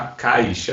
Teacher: Esse I tu nem fala normalmente. Ele é tão fraco, é uma semivogal, é tão fraca que tu nem fala ela.